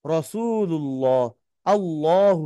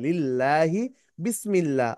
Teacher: আল্লাহ শব্দের ডানে জবর বা পেশ হলে আল্লাহ শব্দের লামকে মোটা করে পড়তে হবে।